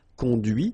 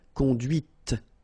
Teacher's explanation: final T is not pronounced